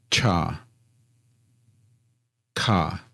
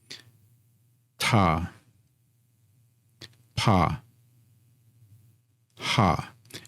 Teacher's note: Aspirated consonants, you can feel that puff of air when you say them.